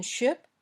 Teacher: when you say sh your tongue almost touches the top of your mouth then the air comes out gently your lips are a little bit rounded and the sound is voiceless